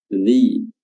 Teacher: huruf dzal ya, makhrajnya adalah ujung lidah diapit kedua gigi atas dan bawah